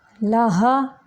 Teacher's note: हा जो है ये हलक का वो हिस्सा जो सीने की तरफ है वहाँ से निकलता है।